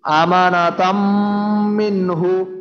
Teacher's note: এখানে যে তানবিনের পর মিম আছে, তাই আমানাতাম একটু গুন্না হইল আর কি।